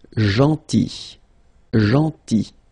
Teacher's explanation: So remember this final L is not pronounced.